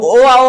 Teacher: जो ओ आओ होता है वह कंठोष्ठ होता है। कंठ ओष्ठ, कंठ और ओष्ठ से मिलकर उच्चारण होता है।